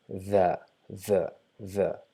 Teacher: We just touch our tip of the tongue to our top incisor and try to pronounce z, but we will not be able to pronounce z because our tongue is not inside our mouth. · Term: Dhal